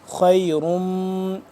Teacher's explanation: خیرم، خواہ موٹا، را بھی موٹا ہے، را کے اوپر دو پیش ہیں، یہ تنوین ہے، اور آگے میم مشدد ہے، اس پہ ہم غنہ کریں گے